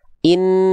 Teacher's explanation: Nah, kenapa untuk nun dan mim ini ketika bertasydid dia itu lebih bukan hanya ditekan tapi tahan? Karena ada kadar suara yang masuk ke hidung dulu, sehingga kadar pelafalannya lebih lama. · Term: gunnah